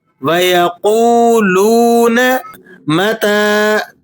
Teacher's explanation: تا پر کھڑا زبر ہے اور کھڑا زبر بھی آپ جانتے ہیں کہ یہ الف مدہ کے قائم مقام ہوتا ہے، اسے بھی آپ نے 1-2 سیکنڈ کھینچنا ہوتا ہے